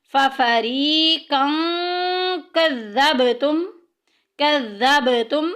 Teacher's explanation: با کو ہلائیں گے کیونکہ حروف قلقلہ میں سے ہے